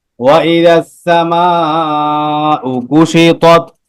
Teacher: সামাউ চার আলিফ টান মধ্যে মুত্তাসিল